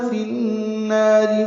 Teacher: فی النار میں ادغام شمسی مع الغنہ ہے